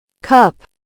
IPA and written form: kʌp (Cup)